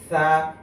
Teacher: জিহ্বার আগা সামনের দাঁতের আগার সাথে লাগবে